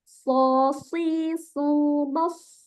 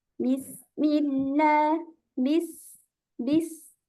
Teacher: Sofir ini lebih tajam lagi ketika dia berharokat sukun.